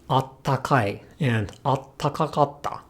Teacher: they do say attakai and attakakatta, dropping one ta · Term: wild vowel deletion